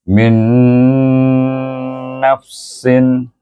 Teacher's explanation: Hukum nun sukun atau tanwin dibaca dengan idgham ma'al gunnah dengan dengung 2 harakat. Bunyinya min nafsin.